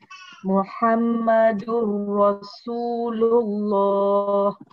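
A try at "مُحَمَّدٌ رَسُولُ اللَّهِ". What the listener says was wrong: Okey, mim Muhammad tu, mim dia tu pantangkan sikit dengung dia. Samakan sikit dengungnya. Macam gitu. Muhammadur Rasulullah. Dua. Jadi kita lihat kat sini mim untuk Muhammad tu harus didengungkan.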